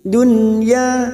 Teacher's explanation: nun sukun bertemu ya Idhar wajib dibaca jelas tanpa mendengung